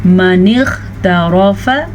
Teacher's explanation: الا من اغترف، الا الف مدہ، من اغترف غین کو پر پڑھیں گے کیونکہ غین حروف مستعلیہ میں سے ہے، ہمیشہ پر پڑھا جاتا ہے۔ را کو پر پڑھیں گے، را کے اوپر زبر کی وجہ سے